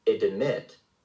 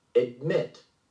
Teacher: the D sound is pronounced quietly without an extra vowel after it.